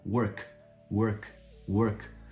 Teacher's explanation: Work, termina com K. O K a gente não vibra a garganta.